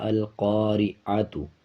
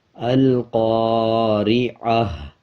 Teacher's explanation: جب ہم اکٹھا پڑھیں گے آیت پہ وقف نہیں کریں گے، رکیں گے نہیں، تو پھر پڑھا جائے گا القارعۃ، اور جب ہم اس پہ وقف کر لیں گے یعنی آیت کمپلیٹ کر لیں گے تو یہ گول تا ہا میں بدل جائے گا، اور تا کے اوپر جو پیش ہے اس کو سائلنٹ کر دیں گے، اس کو نہیں پڑھنا، اور جو تا ہے اس کو ہا بنا دیں گے اور ہا کی آدھی آواز آئے گی، جیسے القارعہ۔